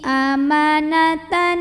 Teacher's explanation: Berikutnya di sini ada hukum idgham bi gunnah karena ada tanwin fathah yang bertemu dengan nun. Maka cara baca tanwin fathahnya ini dileburkan atau dimasukkan ke nun kedua ya, ke nun tasydid disertai dengungan. Jadi bunyinya N dan ditahan bunyi N-nya.